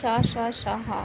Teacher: वायु का निर्गमन घर्षण के साथ होता है, उन्हें संघर्षी व्यंजन कहते हैं। जैसे शा, शा, शाहा, इन्हें ही ऊष्म संघर्षी व्यंजन भी कहते हैं, क्योंकि उच्चारण के समय वायु घर्षण करती हुई निर्गमित से ऊष्म उत्पन्न होती है, उसे क्या वो संघर्षी व्यंजन कहते हैं।